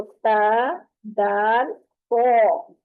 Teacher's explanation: पो और ता की आवाज में फर्क होगा। पो की आवाज मोटी आएगी।